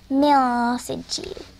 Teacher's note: So the sukun, and since the sukun, the nun sukun is followed after the sin, you're going to have an ikhfa there, so it's going to be mil sijil. You don't say the nun clearly, you say mil sijil